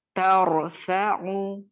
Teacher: پھر اس کے بعد رو کو موٹا کرنا ہے